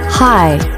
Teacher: The H sound happens without changing what the lips do for the I as in by diphthong.